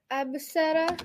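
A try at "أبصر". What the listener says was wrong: Excellent. Absara, which is a real word.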